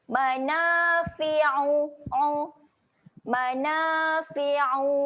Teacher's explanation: huruf ain, huruf yang kena tekan dekat tengah kerongkong. Jadi kena paksa tekan sikit.